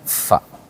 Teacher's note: bibir bawah ditempelkan ke gigi seri atas.